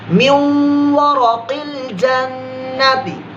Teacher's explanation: ایسا اخفاء کا غنہ نہیں ہے, ادغام کا ہے.